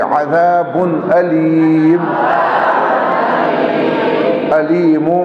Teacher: ذال میں سیٹی نہیں ہونی چاہیے